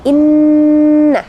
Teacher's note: ada nun tasydid, itu harus didengungkan